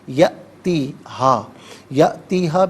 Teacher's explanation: یأتی میں حمزہ ساکن ہے تو اسے جھٹکے کے ساتھ پڑھا جائے گا۔ یأتیہا، یأتیہا ملا کر پڑھیں گے۔